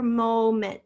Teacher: here we have our open long o